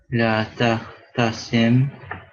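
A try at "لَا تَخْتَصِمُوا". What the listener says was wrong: So it wouldn't take the sukoon.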